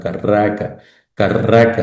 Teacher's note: se alarga la a